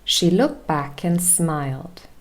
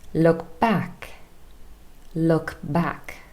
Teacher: The word looked loses its final consonant sound t. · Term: dropped consonants